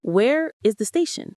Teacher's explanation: Notice how my voice goes up on station.